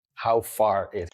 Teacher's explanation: Look at how small he makes his stressed vowel in far.